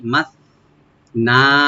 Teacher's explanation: মিমটাকে open করে সাটাকে অবশ্যই right দিবেন, সিন যেন না হয়।